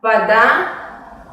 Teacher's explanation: En la palabra вода pasa lo mismo. La vocal A es tónica y se pronuncia de una manera normal. Y la vocal O se pronuncia más como una A breve.